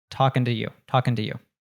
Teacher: It's a function word, so it reduces to an so we'll reduce just to t. And we have an American T that happens there with talking to you. So the T in t actually becomes a d.